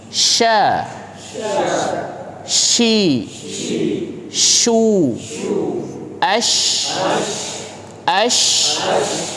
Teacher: mengucapkan huruf ya disertai dengan nafas berikutnya adalah huruf syin ya huruf syin ini baru dia mengalirkan nafas ya dalam jumlah yang banyak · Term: huruf shin